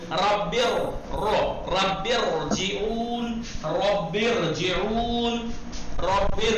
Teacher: अब यहाँ पर क्या होगा, रे में तफखीम होगी, फर्क नहीं करता इससे पहले जेर हो, जबर हो, पेश हो। देखिए जेर होने के बावजूद भी तफखीम हो रही